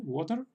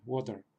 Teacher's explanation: prácticamente no estamos pronunciando ninguna otra vocal al terminar la palabra, sino que directamente detrás de la T, water, viene la R, water. Pues es algo así. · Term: R vocálica